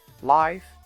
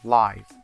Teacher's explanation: F is voiceless labiodental fricative. V is voiced labiodental fricative.